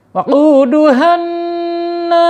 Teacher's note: nunnya bertasydid dibaca gunnah ya, gunnah. Ditahan dulu, ditekan dan ditahan 2 harokat. Waquduhanna ya, panjang ya, nunnya dipanjangkan.